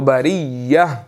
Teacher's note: جب ہم نے اس کے اوپر وقف کرنا ہے تو یہ تا گر جائے گی اور ہا باقی رہے گی